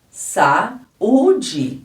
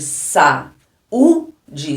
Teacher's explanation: neste caso ele é um iato porque são duas vogais elas são bem marcadas